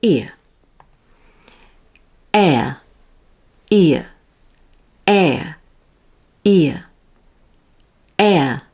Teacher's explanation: my jaw doesn't move it stays at a neutral position and my tongue is closer to the roof of my mouth for e but then comes down with the jaw to neutral for uh